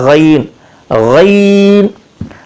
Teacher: ادنا حلق ادنا ہے یعنی منہ کے قریب جو حلق کا حصہ ہے وہاں سے یہ ادا ہوگا